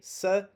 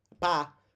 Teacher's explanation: So first A, s, closed, second A, pa, open. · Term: closed A